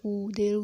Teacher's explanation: जब हमने स्वरों का विभाजन किया था तब भी हमने देखा था वृत्ताकार के अंतर्गत ओष्ठ की आकृति गोल बनती है